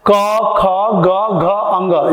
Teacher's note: इसमें जीवा का असर नहीं है, इसमें कंठ से आ रहा है, इसलिए कंठव्य वर्ण भी कहे जाते हैं।